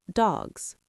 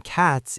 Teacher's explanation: After voiced sounds like G, D, B, the S sounds like Z. · The S sounds like Z. Exactly. It's a Z sound at the end. But in cats, it's a s sound. Right. After T, it stays as S.